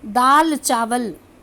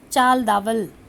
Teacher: आद्य शब्दांश विपर्य के लिए हम उदाहरण दे सकते हैं, कह सकते हैं दाल चावल। जब हम शीघ्रता से बोलते हैं दाल चावल तो बोलने में आता है चाल दावल।